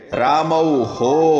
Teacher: રામૌ ઔ સ્વર છે પણ ઉચ્ચારણ થશે હો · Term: વિસર્ગનું ઉચ્ચારણ